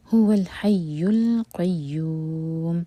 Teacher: حرکہ لمبا، هو الحی القیوم، لام ساکن پر جھٹکا نہ آئے، هو الحی ہا حلق سے یا پر شدہ، تو یا کو زور دے کر پڑھا جائے گا ، هو الحی القیوم، اور یوم ہم یوں 4 حرکہ لمبا